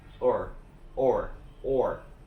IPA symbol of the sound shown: ɔr